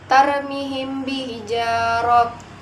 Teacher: tarmihim bihijarah itu ada mad tabi'i karena kasroh diikuti ya sukun, dibaca sepanjang 2 harokat · ifa safawi, mim mati bertemu dengan ba, cara membacanya dibaca samar